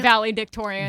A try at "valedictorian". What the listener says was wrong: Valedictorian. It's valedictorian. You're saying valley and then dick.